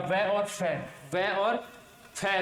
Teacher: नीचे का होठ और ऊपर के दांतों से इनका मिलन होता है